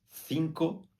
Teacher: na Espanha se pronuncia A C com a língua entre os dentes